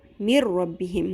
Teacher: نون ساکن کے بعد را آ گیا کہ تو نون کی آواز ختم ہو گئی بیچ میں سے